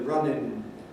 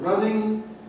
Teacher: it's using an alveolar rather than a velar nasal